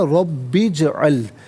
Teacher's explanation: جیم ساکن ہے لیکن حرف قلقلہ ہے تو آواز لوٹتی بھی محسوس ہونی چاہیے